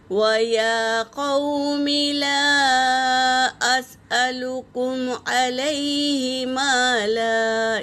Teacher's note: جب ایک زبر ہٹ جائے گا تو وہ الف سے پہلے زبر الف مدہ ہو جائے گا، تو وقت کی حالت میں الف مدہ ادا کریں گے